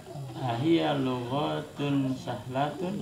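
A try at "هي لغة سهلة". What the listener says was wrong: Nah, gha-nya jangan diayun. Naam, hiya lughatun sahlatun.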